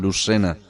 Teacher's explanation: de córdoba la de fernán núñez ellos lucena dicen lucena porque hay quizá un poquito más de retención entre la lengua de la punta de la lengua con la parte dental